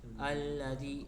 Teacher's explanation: Karena apabila mad thobi'i bertemu dengan hamzah tidak dalam satu kata seperti ini contohnya alladzi cara membacanya dipanjangkan 4 sampai 5 harakat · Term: mad jaiz munfasil